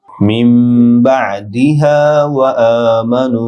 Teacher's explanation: মিমের সাথে যুক্ত হবে, মিমে গুন্না হবে, বা আইন ডিপ হবে।